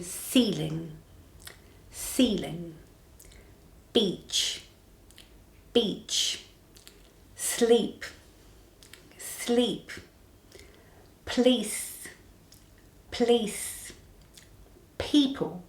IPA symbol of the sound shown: i: